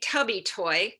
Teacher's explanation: we have the t phoneme and then the uh vowel the b phoneme and then that e vowel another phoneme and then the oi diphthong